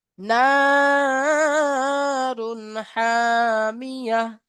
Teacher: তানবিনের পরে হুরুফে হালকি 6টি অক্ষরের মধ্যে হা এসেছে, তাই বিনা গুণা জাহির করে পড়তে হবে তানবিনকে